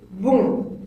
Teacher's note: La deuxième, bon, l'air passe par le nez.